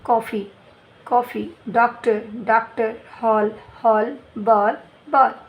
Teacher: इसे अर्धचंद्राकार इस प्रकार कहते हैं। इसका उच्चारण आ और ओ के स्वर जो होते हैं उनके बीच की ध्वनि का उच्चारण होता है।